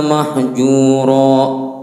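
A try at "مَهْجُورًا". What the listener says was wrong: Mahjura. Haknya rada tebelan dikit.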